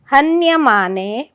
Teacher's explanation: न हन्यते ह वराघात, कारण न्य हे जोडाक्षर आहे पुढे. हन्यमाने पुन्हा ह वराघात.